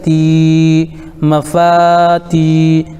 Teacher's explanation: یا ساکن سے پہلے تا کے نیچے زیر ہے اس لیے یا مدہ ہوگا، ان کو تھوڑا کھینچ کر پڑھیں